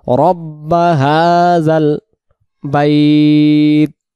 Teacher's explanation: হা গলা ছেড়ে এবং এক আলিফকে আমরা টান দেবো এর উপরে খাড়া জবর।